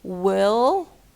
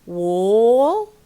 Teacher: Try making wa sound long in words such as wall and what. You will find that it sounds like ooh. So we say will.